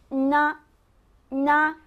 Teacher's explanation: না যখন বলবেন শব্দটি আসবে নাক থেকে, না নাক থেকে, এবং জিভ থাকবে তালুর সাথে লাগানো